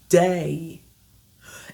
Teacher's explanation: Vous le matérialisez avec le son E accent aigu et I. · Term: diphtongue